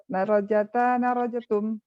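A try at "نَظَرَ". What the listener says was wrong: Nadharata. Nadharata. Nadhara. Dha-nya dulu baru ra. Jangan dibalik. Pelan-pelan. Nadhara.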